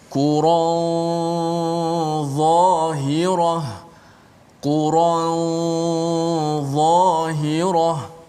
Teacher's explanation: ikhfa nun pada dha ini, dia bunyi dia ada tebal sedikit, bunyi tafkhim tebal pada gunnah.